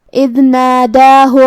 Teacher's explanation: پھر حرف الدال کو ہم ظاہر کریں گے کیونکہ اس پہ جزم ہے